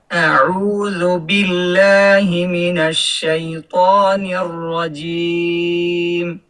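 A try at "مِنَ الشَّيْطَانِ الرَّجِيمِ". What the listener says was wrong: তটাকে আরেকটু সুন্দর করেন, একটু ফাইটা ফাইটা গেছিল, হামসের মতন হয়ে যায়। মিনাশ শাইত ত ত হুম হামসের মতন হয় কেন? ত তো আর হামস না।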